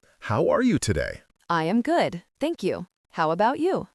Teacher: I heard the stress on are good, thank and about.